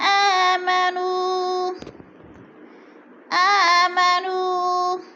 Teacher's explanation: الا الذین آمنوا، آمنوا، نو پہ وہ مدہ ہے، وہ ساکن سے پہلے نون کے اوپر پیش ہے تو وہ مدہ کو ایک الف کے برابر کھینچ کر پڑھنا ہے۔